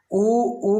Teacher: उ का उच्चारण स्थान होठ होते हैं इसलिए इसे ओष्ठ्य कहा जाता है।